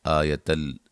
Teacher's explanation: یہاں نون تنوین کا ادغام ہے لیکن بلا غنہ ہے، غنہ نہیں کریں گے